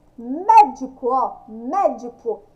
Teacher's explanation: Sai o som do mé, o som aberto. Então, acento agudo.